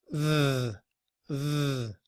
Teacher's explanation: The word the in IPA begins with this symbol here, which is the TH sound that we make when we're also using our voice.